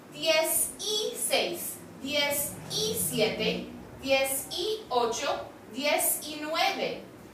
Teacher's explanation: Be careful to pronounce the E in the middle as an I.